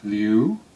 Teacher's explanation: the fourth most common name Leu said with a rising second tone means kill